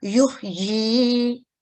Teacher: 2 second کے لیے ہی ہم اس کو کسرہ اشباعیہ کو لمبا کریں گے